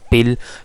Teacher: when L comes at the end of a syllable, as in the case of pill, so the body of the tongue raised in the mouth to approximately to the position of soft palatal, ठीक है।